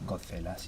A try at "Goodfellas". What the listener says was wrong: Okay, you mean Goodfellas? It is The Godfather, but Goodfellas. pay attention, if you read it, you realize that it has. good. word good. It's two. two O's,